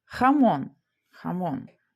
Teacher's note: Вимовляється ця буква як х. Вона схожа на українську х, але сильніша. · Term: Хота